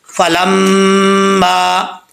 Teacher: ایک تو میم کے اوپر شد ہے، غنہ کرنا ہے، اور ایک الف کی مقدار، میم کیا کہ الف ہے، اس کو لمبا کریں گے، ایک الف کی مقدار۔